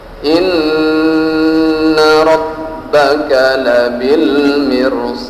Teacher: Tidak dirasakan kalau pangkal lidah kita ikut terangkat. Maka huruf ra yang baris sukun walaupun sebelumnya ada huruf mim baris bawah tetap dibaca tafkhim atau kental atau kentara.